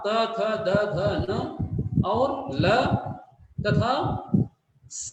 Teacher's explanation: इनको उच्चारित करते हुए हमारी जिह्वा जो है वो दांत को स्पर्श करती है। अब इसके बाद आता है ओष्ठ।